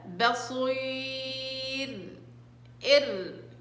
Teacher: والراء طبعا سكنت وقبلها ياء فهنا ترقق